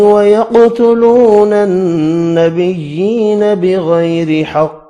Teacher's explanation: قاف ساکن ہے، قلقلہ کریں گے، حروف مستعلیہ ہے، پر بھی پڑھا جائے گا۔